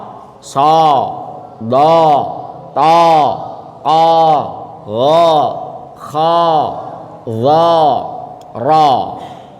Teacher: Huruf tafkhim itu yang vokalnya fathahnya o.